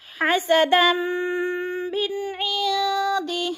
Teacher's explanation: زبر تنوین کو میم کے ساتھ ملا کر ادغام کریں گے، یعنی مدغم کریں گے۔ حسدا من عند، من پہ اظہار ہو رہا ہے، نون ساکن کے بعد عین حروف ہلکی میں سے ہے تو ادھر اظہار، اخفا نہیں کریں گے، لفظ کو ظاہر کر کے پڑھیں گے۔